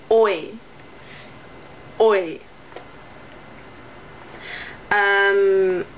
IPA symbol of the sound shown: ɔɪ